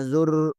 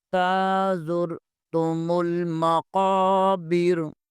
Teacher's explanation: غلط ہے، یہاں پر را کو اوپر شد بن جاتی ہے، را کو دو دفعہ پڑھا جاتا ہے، اس لیے یہاں پر را کو موٹا پڑھنا ہے لیکن قلقلہ نہیں کرنا ۔ تازر تم المقابر، قاف کو بھی پر پڑھنا ہے۔ تازر